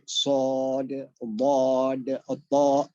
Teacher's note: ada yang isti'la, pangkal lidah terangkat sehingga keluar vokal O